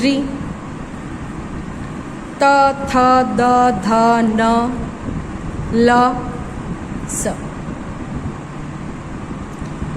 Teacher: अब देखिए dental, that means दंतव्य। दंतव्य मतलब दांतों का ज़्यादा हिस्सा आप यूज़ करते हैं इन अक्षरों को बोलने के लिए